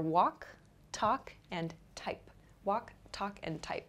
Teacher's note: So the ending sounds are k, k, and p here. So these are called unvoiced sounds.